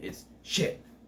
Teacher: You don't pronounce the T in shit.